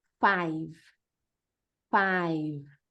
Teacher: E não é five com I no final. A gente vai parar na letra V.